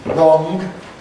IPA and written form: rɒŋg (wrong)